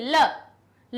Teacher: देखिए टकराई ध्वनि की नहीं, ल बोलिए, कहां से टकराई? जीभ हमारी कहां टकराई? दांत से टकराई, यानी दंतव्य हो गया ल